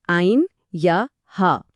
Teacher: पहले हैं हुरूफ-ए-हल्की। यह वह हुरूफ हैं जिनकी आवाज हलक से निकलती है